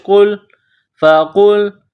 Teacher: قاف کو لام کے ساتھ ملانا ہے، قاف کو موٹا کرنا ہے. فا زبر فا، قاف لام پیش قل، فقل.